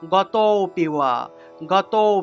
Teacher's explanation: লুপ্ত এর উচ্চারণ করার জন্য আগের শব্দটাকে বা আগের স্বরটাকে একটু টান অর্থাৎ দীর্ঘ দ্বিমাত্রিক উচ্চারণ করতে হয় একটু দীর্ঘ উচ্চারণ করতে হয় তাহলে উচ্চারণটা হবে গত পিওয়া গত